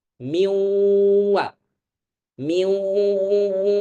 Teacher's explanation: Tetapi karena dia masih dalam kategori biwunnah, masih adanya gunnah, maka tentu kita membacanya dengan tetap menjaga gunnah dari khayshum